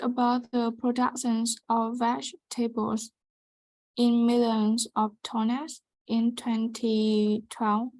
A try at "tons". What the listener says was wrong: So this word here is pronounced tons, tons. Okay, not tonners, it is pronounced tons. Tons. So production of vegetables in millions of tons in 2012.